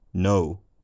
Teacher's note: But this monophthongal or in the word no, I suspect, will lead the subconscious machinations of the brain to favour the Scottish or Irish interpretation, because Americans tend to have a diphthongal vowel in this word